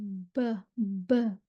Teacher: ये आप यहाँ पे देख लेते हैं, डायग्राम में देख रही है ब निकल रही है, ब देखें ब, ब गीला हिस्सा होंठों का आपस में मिल रहा है।